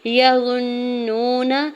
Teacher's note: یظنون، یا کے زبر کو جلدی سے ادا کرنا ہے، غوا کی پیش کو نون شدت کے ساتھ ملاتے ہوئے غنہ کرنا ہے، واؤ ساکن سے پہلے نون کے اوپر پیش ہے، واؤ مدہ ہو رہا ہے، دو حرکت کھینچ کے ادا کریں گے، نون کے زبر کو بغیر کھینچے ہوئے ادا کریں گے۔